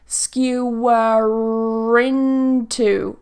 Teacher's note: skewer ends with a schwa here this sound skewer into it's going to link with a ra